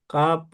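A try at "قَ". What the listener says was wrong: কাব নয়, কফ, কফ, কফের উপরে পেশ এসছে। কফ, কফ র পেশ কুর।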